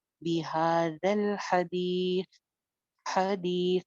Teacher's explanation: हा दरमियान हलक से, दी एक अलिफ लंबा, ता पे हम साकिन लगाएंगे, ता भी बगैर सीटी के है।